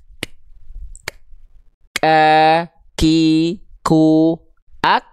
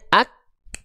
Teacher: tertahan dulu nafasnya, ak, baru keluar percikan nafas, ak. Gak langsung bareng antara tertahan suara dan mengalir nafas.